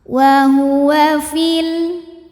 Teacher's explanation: Sukun bertemu sukun tidak bisa dibaca sehingga sukun pertama dilepaskan kalau wasal. Fil jadi pendek.